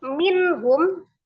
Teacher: ha salah satu huruf yang keluar dari alhalqi atau tenggorokan. Tempatnya tenggorokan bagian bawah ya. Maka hukumnya adalah izhar dibaca dengan jelas. Nun sukun ketemu dengan h-nya. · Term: izhar halqi